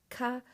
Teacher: with a little bit of a breath of air behind it, aspiration.